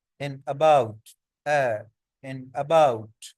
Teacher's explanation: Central vowels, middle of the tongue, टंग का जो middle part है इज रेज्ड, वो ऊपर को आता है।